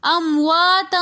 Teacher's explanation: تا کے اوپر دو زبر کی تنوین کے بعد اخفا کے 15 حروفوں میں سے فا رہا ہے، تو اس لیے ہم یہاں پر امواتا اخفا کر کے پڑھیں گے۔